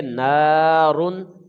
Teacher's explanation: اور آگے تنوین ہے، تنوین کے بعد ہا حروف اظہار کا ہے، اس کو ہم بغیر غنہ کے فوراً ادا کریں گے